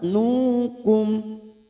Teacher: Mim sukun dibaca jelas tanpa mendengung. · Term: idhar safawi